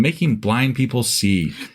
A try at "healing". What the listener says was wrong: way you spoke, it sounded like you said killing blind people instead of healing.